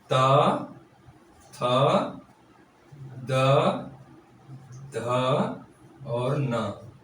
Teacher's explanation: ता वर्ग का उच्चारण स्थान होता है दंत से